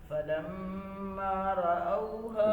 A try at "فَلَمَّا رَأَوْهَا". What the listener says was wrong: رأوا نہیں پڑھنا، منہ بھر کے فلما رأوها بتایا تھا کہ تفخیم کتنے طریقوں سے ہوتی ہے؟ تین طریقوں سے. ایک ہے زبان کی جڑ کا اوپر اٹھنا، دوسرا زبان کی جڑ کے ساتھ ساتھ زبان کا درمیان حصہ بھی اوپر اٹھ جائے، یا پھر منہ بھر جائے.